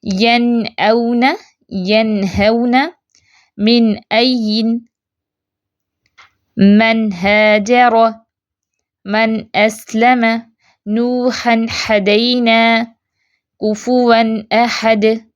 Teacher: زیادہ غنہ نہیں ہوگا اس میں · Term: اظہار